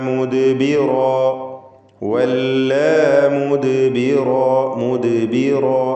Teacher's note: ദാലിൻ്റെ സുക്കൂൻ ഖൽഖല സുഗ്റ നൽകി ശബ്ദം ഹറക്കത്ത് പോലെ ചലിപ്പിക്കണം. വഖഫ് ചെയ്യുമ്പോൾ മുദ്ബിറ എന്ന് അലിഫിന്മേൽ വഖഫ് ചെയ്യണം.